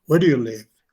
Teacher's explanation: Where do you live? La entonación cae. ¿Por qué? Porque esta no es una yes-no question.